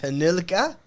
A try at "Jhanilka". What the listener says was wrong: It's not Jhanilka. It's not an H. Y. The JH becomes a Y sound.